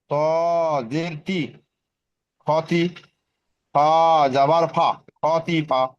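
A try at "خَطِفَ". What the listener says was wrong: খতিফা বলে টানছেন কেন খতিফা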